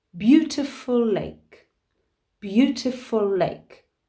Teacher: when we have a word that ends with a letter and then the next word begins with that same letter we actually drop the last letter of the first word we don't repeat that letter because it doesn't flow so we